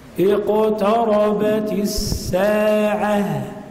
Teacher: إذا قلنا حرف القاف من أقصى اللسان فوق، من أقصى اللسان فوق أو ما يحذيه من الحنك الأعلى، هذا مخرجه، فنقول أن القاف إذا كان ساكنا يتغير بالنسبة لصفة الحرف، فيصبح حرفا مقلقلا، وجب تفخيمه عند القلقلة